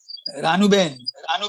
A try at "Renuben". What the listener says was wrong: It's not Ranu, it's Renu.